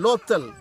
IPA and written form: loˑt̪ʰəl (Lothal)